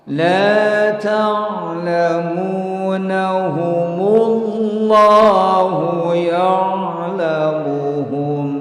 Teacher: Yang asalnya mim mati menjadi harokat domah mu. Yang asalnya Allah a-nya hilang jadi mullah. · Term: cara baca wasal